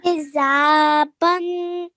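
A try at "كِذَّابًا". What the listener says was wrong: Well done.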